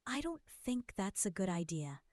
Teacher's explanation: Stress on don't and good idea.